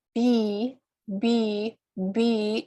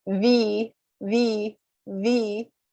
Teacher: B, B, B is with 2 lips, and V, V, V is with my teeth touching my lower lip